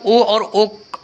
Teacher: तो ओ और औ ये हमारे कंठोष्ठ वर्ण होते हैं।